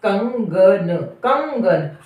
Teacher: आप बोल के देखिए, जब हम बोलते हैं ना तो जो श्वास है यानी जो हवा हमारे मुख में है वो मुख से रुकती हुई और नाक से निकलती है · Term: अनुस्वार